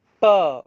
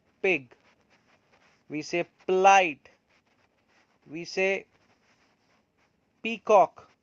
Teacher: When we say per, then we obstruct the full, the full flow of air, and it is completely blocked. When once it is blocked, that means we are going to open them, and as we are going to open them, the sound produced would be per sound. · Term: plosive